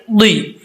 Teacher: اب یہاں پر ضاد ہے، حرف ضاد کو پڑھتے وقت اس کا مخرج کا آپ نے خاص خیال رکھنا ہے۔ کیسے پڑھیں گے؟ زبان کی جو لیفٹ سائڈ ہے یہ اوپر والی داڑھوں کے ساتھ ٹچ ہوگی تو یہ ضاد پڑھا جائے گا، اور اس کے لیے زبان کا اوپر کی طرف اٹھانا لازمی ہے